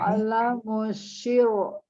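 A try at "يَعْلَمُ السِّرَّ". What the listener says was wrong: Oke, huruf bukan syir. Si, pakai S. Tadi kalau misalkan ro-nya waqaf berhenti, huruf sebelumnya kasroh, maka ro-nya dibaca tipis. Ya'lamusyir. Nanti ada catatan huruf sinnya ya. Tapi ro-nya nggak boleh, walaupun ro itu kan kayak ro harusnya tebal, tapi karena dia kita putus maka bacanya jadi tipis. Walaupun enggak, tasdid nggak ngaruh. Jadi yang ngaruh itu harokatnya.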